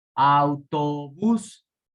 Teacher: Autobús, acento en la última sílaba, termina en NS o vocal, por lo tanto lleva tilde.